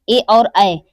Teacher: ए और ऐ हमारा जो है वो कंठ और तालु दोनों से मिलकर उच्चारित होता है। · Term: कंठ तालव्य